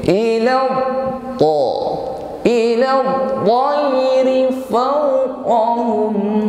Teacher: Awalam yarau ila menekan pada huruf ta yang bertasydid. Huruf ta ini idbaq dan isti'la, bunyinya tebal. Ila ta, bunyinya kuat, tidak ada nafas yang mengiringinya.